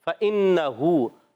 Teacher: نون مشدد میں ایک الف کا غنہ کریں گے